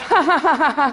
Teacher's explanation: you find nasality in posed laughter, that kind of ha-ha-ha-ha sound, that you never get, you could not do if you were laughing involuntarily.